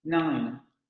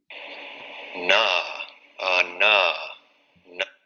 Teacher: Vamos a cerrar, esa posición articulatoria va a cerrar la cavidad oral. Vamos a pasar el aire hacia la cavidad nasal y las cuerdas vocales van a vibrar. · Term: Nasal alveolar sonoro